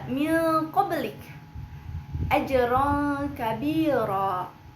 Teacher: nun sukun atau tanwin bertemu dengan huruf ikhfa yang jarak makhrajnya itu paling jauh dengan makhraj huruf nun. yaitu qof kaf. · yaitu qof kaf. Karena qof kaf ini berasal pada aksal lisan yaitu pangkal lidah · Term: Ikfa ab'ad, ikhfa ab'ad